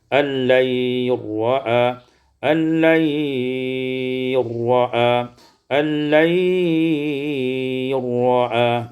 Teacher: idghamul lam fi ra, diidghamkan lam pada ra · Diidghamkan lam kepada ra dengan idgham kamil, tidak ada bunyi lam lagi